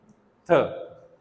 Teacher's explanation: so we produce a strong puff of air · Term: एस्पिरेटेड साउंड